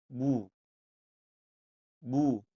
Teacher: dibaca menjadi u dengan bibir dimonyongkan atau dalam keadaan mencucu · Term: harakat damah